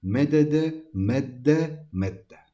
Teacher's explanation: Yani birinci dalı ikinci dala idgam ediyoruz y birinci dalımızı 2 dalımız tabir giriyoruz giydiriyoruz manasındadır kime idgam